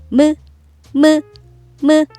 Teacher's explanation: 이렇게 입술을 다물고 소리낼 준비를 한 다음 입술을 부드럽게 벌리면서 소리내면 무, 무, 무. 입술을 붙이고 다물고 있다가 입술을 벌리면서 소리내는 글자니까 벌어진 입술 모양 미음